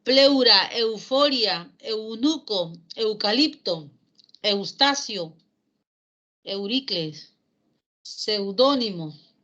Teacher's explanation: Con eu, se entiende que la vocal cerrada es átona, sin fuerza de voz. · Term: diptongo